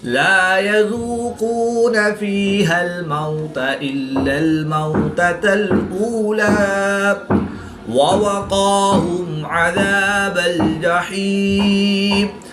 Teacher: واو ساکن سے پہلے میم پر زبر ہے تو واو لین ہوگا، اس کو لمبا نہیں کریں گے